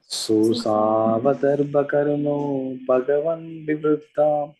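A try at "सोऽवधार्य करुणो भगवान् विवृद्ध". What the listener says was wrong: అదర్భ కాదు, అదబ్ర. అబ్బర్కదబ్ర, అదబ్ర. సోసావధబ్ర కరుణో భగవాన్ అట్లా చేయండి. సోసావధబ్ర కరుణో భగవాన్ వివృద్ధ.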